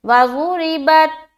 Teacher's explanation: बा को जब हम ता से मिला रहे तो हमारी आवाज़ अटक जाएगी